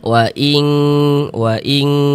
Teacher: di bagian ing-nya tuh kita tahan, kita panjangkan ya, kita dengungkan sepanjang dua harakat. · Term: ikhfa hakiki